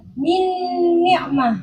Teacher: makhraj dan sifatnya nun itu kan masuk secara keseluruhan kepada huruf yang kedua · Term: idgham kamil